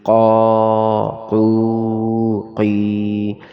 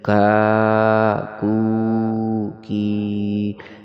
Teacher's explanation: دو نقطوں والا قاف موٹا کر کے پڑھیں گے